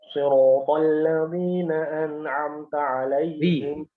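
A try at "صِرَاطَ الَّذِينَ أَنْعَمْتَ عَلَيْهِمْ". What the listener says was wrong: Siratal ladzi enggak usah terlalu lebar ya. Jangan tapi biasa saja. Mulai dilatih. Siratal ladzi. Ya, Jadi seperti ini aja. Untuk melatih huruf shad itu antum melafalkan huruf sin. Ujung lidah tuh berada di bagian bawah gigi seri bawah.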